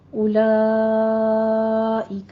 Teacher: ایک ہی کلمہ میں فتح قائمہ یعنی الف مدہ کے بعد حمزہ آ رہی ہے تو اس کو 5 کاؤنٹ کرنا ہے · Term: مد متصل واجب